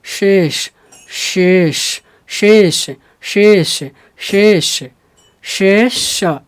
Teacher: शे मोटा हो रहा है और श हल्का सा हो रहा है, जीभ थोड़ा सा आगे आ रहा है। · जीभ को पहले पीछे, थोड़ा सा आगे, पहले पीछे ले जाना है श, तालव्य श में, और मूर्धन्य श में क्या बोलना है, जीभ को थोड़ा सा आगे रखना है मूर्धा की तरफ